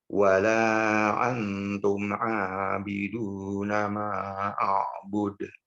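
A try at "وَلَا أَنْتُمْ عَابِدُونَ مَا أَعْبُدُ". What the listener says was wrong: Ulangi Pak, jangan tergesa-gesa. Perpindahan huruf, jangan tergesa-gesa. Antum abiduna ma.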